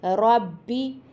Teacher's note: با دونوں ہونٹوں کے ملنے سے ادا ہوگا